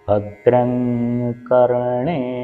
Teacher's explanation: ഭദ്രം എന്നുള്ളതിന്റെ അവസാനത്തെ മ് കഴിഞ്ഞിട്ട് കവർഗ്ഗത്തിലുള്ള ശബ്ദം ആയതുകൊണ്ട് കവർഗ്ഗത്തിന്റെ അനുനാസികമായിട്ടുള്ള ങ് ആയിരിക്കും വരുക